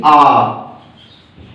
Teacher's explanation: तो विव्रत, विव्रत वो होता है ओपन जिसमें कि आपका पूरा मुख खुलेगा, जैसे कि आ। जब आप बड़ा आ कहेंगे इसमें आपका पूरा मुख खुलेगा